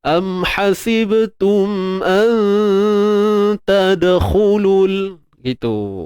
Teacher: Jadi huruf ta tu dia nipis, maka dengung juga nipis. Dengung ikhfa kita juga nipis. · Sembunyikan nun, jangan sebut nun tepat pada makhrajnya. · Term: ikhfa hakiki